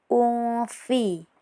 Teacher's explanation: Kemudian pada bagian ini ada juga hukum ikhfa hakiki karena tanwin bertemu dengan salah satu huruf ikhfa yaitu fa jadi dibaca samar